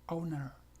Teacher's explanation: la E de owner, o sea, dueño, es una E muy, por decirlo así, muy abierta, o sea, no es E, es E.